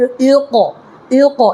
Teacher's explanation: یہاں قلقلہ کرنا ہے، اس لیے حروف قلقلہ کے 5 حرفوں میں سے قاف ساکن کے ساتھ ہے اق، را حمزہ زبر را، اقرا اس میں جھٹکا مارنا ہے،